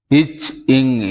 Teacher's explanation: நாவின் இடைப்பகுதி நாக்கினுன் இடைப்பகுதி நடு அண்ணத்தின் இடைப்பகுதியை பொருந்துவதால் பிறக்கின்றன